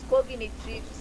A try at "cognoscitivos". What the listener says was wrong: É cognoscitivos. para ela entender, porque falar cognitivos é uma coisa e cognoscitivo é outra.